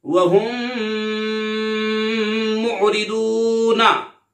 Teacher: इदगाम शफवी यानी गुन्ना करके पढ़ेंगे।